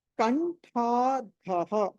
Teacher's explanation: సో ఇక్కడ ఠా మహాప్రాణము, ఠా మహాప్రాణము, తర్వాత విసర్గ ఉంది, ఆ తర్వాత కటి పర్యంత, కటి పర్యంత మధ్యలో ధా అన్నది మహాప్రాణము పలకాలి.